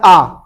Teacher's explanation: और आ जो विवृत है, जिसमें मुख पूरा खुलता है आ बोलने में